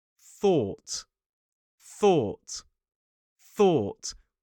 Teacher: We don't use our vocal cords, so it's like this. It's a light blow of air. It's not a massive blast of air. We don't go or you're going to cover somebody in saliva. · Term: voiceless th, voiceless TH sound